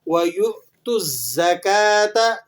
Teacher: وَيُؤْتُ الزَّكَاةَ، یہاں پر آپ نے تھوڑا سا جرکنگ ساؤنڈ کریٹ کرنا ہے، ٹھیک ہے، اور تا کو زا سے ملا کر پڑھیں گے اور تھوڑی سی جھٹکے کی سی آواز آئے گی۔